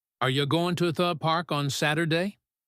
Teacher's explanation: To became to, the became thu, and Saturday lost a syllable. You even shortened to ya.